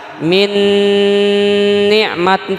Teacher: nun mati ketemu ya Paman ya Ma dibaca jadi Idgham Bighunnah memasukkan nun mati bunyi nun mati atau tanwin disertai dengan ghunnah